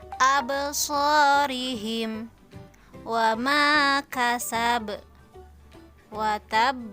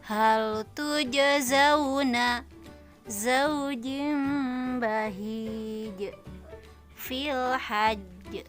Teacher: melepaskan suara pantulan dengan mengalirkan. Jadi tidak ditahan ya. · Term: huruf qalqalah